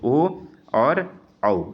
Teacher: ओ और औ का उच्चारण स्थान है कंठ और होष्ठ। कंठ और होष्ठ का मतलब हुआ होंठ, ठीक है ना। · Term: कंठोष्ठम